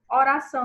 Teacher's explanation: Oração, nós temos o são como a oração, ou como a sílaba tônica, então é oxítona, porque é a última sílaba